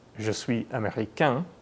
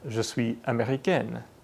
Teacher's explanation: This is the same thing that happens when you say the masculine and feminine versions of I am American in French. The masculine version ends in a nasal vowel